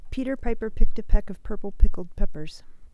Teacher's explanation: there's a little burst of air that comes out of her mouth and goes against the capsule of the microphone and creates that sort of lowf frequency Distortion in essence so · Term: plosives